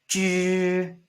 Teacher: Close your teeth. Zh, zh. You can feel a little bit vibration in your throat here, in your mouth.